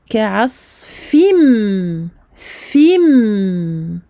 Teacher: Donc comme tout à l'heure, je vais passer de fi et je vais aller sur le mime. Donc on peut dire que le noun du tanwin va être aspiré, assimilé par le mime shadda. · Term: idram bi runna